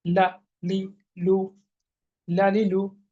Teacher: জিহ্বার আগার কিনারা উপরে এক পাশের দাঁতের গোড়ার সঙ্গে লাগিয়ে। এটা পাতলা ও তাড়াতাড়ি লা লি লু লালি লু লা লি লু লালি লু। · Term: লাম